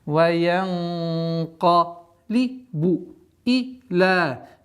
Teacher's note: Здесь у нас сокрытие твердое сокрытие, потому что каф, а сокрытие подчиняйте после идущему звуку, а каф у нас твердый звук, и удерживаем 2 раза с твердым произношением.